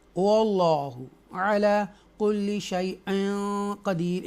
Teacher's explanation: تفخیم کے ساتھ اللہ کو پڑھیں گے کیونکہ اس سے پہلے زبر ہے۔ واللہ علی کل شیء قدیر، اکفا کریں گے، قدیر کھینچ کر ہم اس کو ادا کریں گے۔